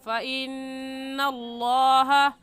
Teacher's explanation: اور فَإِنَّ میں نون مشدد ہے اور نون مشدد پر غنہ کر کے پڑھتے ہیں، تو غنہ کریں گے۔